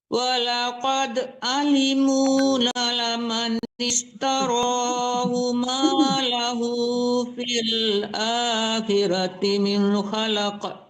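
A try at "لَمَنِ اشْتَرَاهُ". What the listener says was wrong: La-nya cuma satu ya. Coba ulang lagi.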